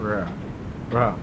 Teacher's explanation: The E in Egyptian didn't exist, and so it was gutturalized, and it came out something like Ra. It's a very, very short E, so that it becomes almost an A.